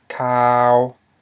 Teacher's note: but now we have cow, which means news, and this is a mid-tone. Okay, it's a high consonant followed by a live syllable, just like before in this example up here, but it's not rising tone.